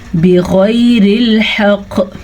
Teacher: اور قاف پہ جھٹکے کی وجہ سے کلکلا ہوگا